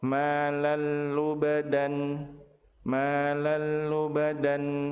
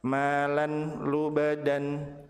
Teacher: Apabila tanwin bertemu dengan lam maka tanwin dilebur ke huruf lam tanpa ditahan dan tanpa disertai dengan guna. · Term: idgham